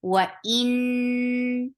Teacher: Noon will get sifa of gunna, and gunna is akmal, so give nice time here. Wa in, but fatha is short.